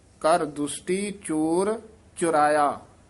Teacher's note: ਇਹਨੂੰ ਚੋਰਾਇਆ ਨਹੀਂ ਕਹਿਣਾ ਹੋੜਾ ਨਹੀਂ ਲਾਉਣਾ ਚੁਰਾਇਆ ਔਂਕੜ ਲਾ ਕੇ ਛੇਤੀ ਉਚਾਰਨ ਕਰਨਾ